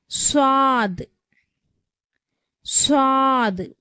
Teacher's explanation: உடைய மஹரஜ் பிறப்பிடம் வந்து ஜா சீன் போன்ற எழுத்துக்களுடைய மஹரஜ் பிறப்பிடம் மாதிரியே நம்ம நாக்கினுடைய நுனி முன் கீழ் வரிசை பற்களின் ஓரத்தில் படும்பொழுது ஸ்வாது உடைய சப்தம் வந்து பிறக்கிறது